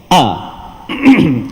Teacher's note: Jadi duduknya di pangkal halqum. Keluar dua huruf yang itu huruf hamzah. dan juga huruf ha.